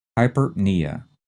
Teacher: Again, like the previous two, the first two syllables are run together fast. The stress is on the knee.